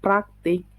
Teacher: Bunyi PR pada kata praktik adalah gugus konsonan, tetapi KT pada kata yang sama itu bukan gugus konsonan. Pemisahan bunyi pada kata itu adalah praktik.